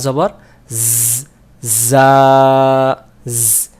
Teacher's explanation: এই যা অক্ষরটাকে সিফাত অর্থাৎ সফিরের অক্ষর যেটাকে শীষ দিয়ে পড়তে হয়